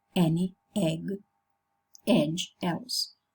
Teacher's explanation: short and lax. So it's a half open, front loosely spread vowel. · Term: the dress